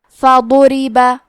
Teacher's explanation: ضاد کی ادائیگی زبان کے کروٹ اور اوپر کے داڑھوں کے جڑ سے ہے۔ ضاد حروف تفخیم میں سے ہے تو ہم یہ حرف کو موٹی آواز میں پڑھیں گے کیونکہ اس پہ پیش ہے، را کے نیچے زیر ہے، پھر با پہ زبر ہے، تو ہمیں یہ تینوں حرکات کو ظاہر کرنا ہے۔ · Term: حرف الضاد